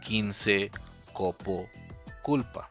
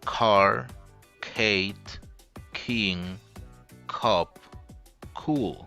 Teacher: English k sound in initial position is aspirated